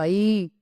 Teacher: ஐ என்னும் நெட்டெழுத்து தனியாக ஒலிக்கும் போது தனக்குரிய 2 மாத்திரை அளவில் இருந்து குறையாமல் ஒலிக்கும். இண்டிவிஜுவலா நம்ம உச்சரிக்கிறோம் ஐ அப்படின்னு சொன்னா 2 மாத்திரை அளவு ஒலிக்கும்.